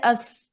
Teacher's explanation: سین ہے، سواد ہے، دونوں کے ساؤنڈ کو سیم نہیں کرنا، سین باریک ہوتا ہے، اس میں سیٹی ہوتی ہے